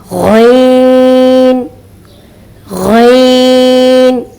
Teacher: غین کو صحیح اور مفخمہ ادا کرنے کا طریقہ یہ ہے کہ زبان کے آخری حصے کو اوپر کی طرف اٹھائیں اور آواز کو اس کے مخرج میں اوپر کی طرف اٹھائیں تو غین موٹا مفخمہ ادا ہوگا